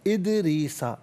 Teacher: دال ساکن ہے لیکن حرف قلقلہ ہے دال، تو آواز لوٹتی ہوئی محسوس ہونی چاہیے. ادریسا غلط، ادریسا آواز لوٹتی ہوئی محسوس ہو دال ساکن پر.